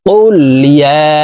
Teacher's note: তো আমরা এই ইয়াকে 3 আলিফ টানে পড়ব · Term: মুনফাসিল